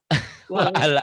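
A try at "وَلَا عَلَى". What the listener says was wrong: Bukan itu lam ya Bu ya. Bukan alif ya Bu ya. Itu lam.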